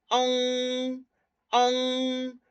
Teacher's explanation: La lengua va más abajo eh, y traba el sonido. Deja que salga más nasal y después se libera para que salga por la boca. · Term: nasal posterior